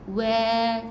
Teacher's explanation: Jangan buka mulut luas. Waw ni dia makhrajnya di bibir. Jadi buka dengan bukaan yang kecil saja Wa. Sebut wa.